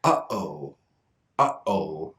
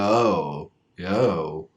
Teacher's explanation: I don't use my tongue or my lips or my teeth for this. I use the glottis. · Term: glottal stop